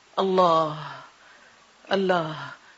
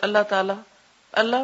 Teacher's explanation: اللہ میں ہم لام تک آ کے رک جاتے ہیں اور اس کو کھڑی زبر ڈال کے ایک حرف مس کر جاتے ہیں۔